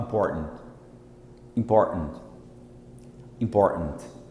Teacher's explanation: O americano não fala important. Ele não fala important. Ele simplesmente fala, ele engole esse T aqui, ó. Ele literalmente engole.